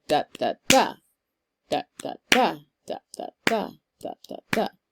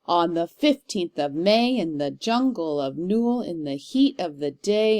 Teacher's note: it has 3 syllables, with the stress being on the last syllable in the foot. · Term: Anapestic meter